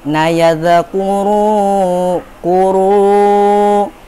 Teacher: Di nayadzakuru kuru, di situ masuk ke dalam hukum mat tabi'i atau mat asli juga. Di situ ro berharokat doma bertemu dengan waw sukun. Cara bacanya panjang 2 harkat.